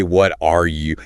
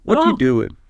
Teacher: See how the RS kind of gets squished in there or even disappears. The sound just linked up. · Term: connected speech